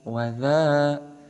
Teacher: Di sini ada huruf dzal diharokati dengan harokat fathah tegak, maka dihukumi sebagai mad tabi'i ataupun mad asli. Panjangnya dua harokat.